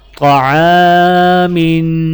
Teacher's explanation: عین کے ساتھ الف ہے تو الف کو ایک الف کے برابر کھینچ کر، میم کے نیچے 2 زیر ہیں تو میم پر غنہ کیا جائے گا